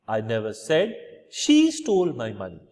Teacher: I'm putting stress on she which means implying somebody else saying this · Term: sentential stress